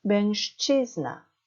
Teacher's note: 뒤에 치 때문에 슈 발음이 됩니다. 그것도 무성음화 발음이 되죠? 그래서 mężczyzna, 취의 강세가 있습니다.